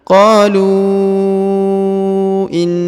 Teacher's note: huruf lu dipanjangkan 5 harokat karena di atasnya terdapat tanda bacaan panjang